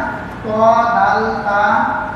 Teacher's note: জিহ্বার আগা উপরের দাঁতের গোড়ার সঙ্গে লাগায়া ত দাল তা